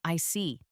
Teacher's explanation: When you show understanding with I see your tone drops slightly to show calmness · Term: falling tone